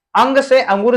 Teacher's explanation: ये नासिका से इनका उच्चारण होता है, नाक से होता है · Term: अनुस्वार